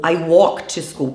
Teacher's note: Tem gente que enche a boca para falar esse L do walk e talk, mas ele simplesmente não existe na pronúncia